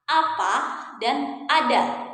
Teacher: Apa maksudnya? Artinya ya ketika kita mengucapkan bunyi vokal A ini posisi lidah kita ya dia berada di posisi rendah bawah dan kita menggunakan lidah bagian depan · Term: vokal A rendah bawah depan